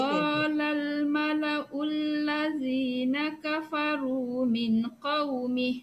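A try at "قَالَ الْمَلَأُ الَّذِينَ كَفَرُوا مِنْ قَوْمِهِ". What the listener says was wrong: Min. Min. Nampaknya mana dengung?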